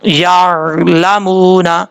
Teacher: یا کے بعد عین ہے، یہاں پہ آپ نے خیال رکھنا ہے، بعض اوقات یا کے بعد جو عین ہے یعنی عین ساکن ہو تو جھٹکے کے ساتھ پڑھ جاتے ہیں، ایسا نہیں کرنا